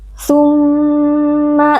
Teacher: mim tasydid dibaca dengan gunnah